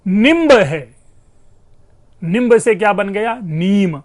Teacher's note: निम्ब से क्या बन गया? नीम, ब का लोप हो रहा है। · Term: अंत्य व्यंजन का लोप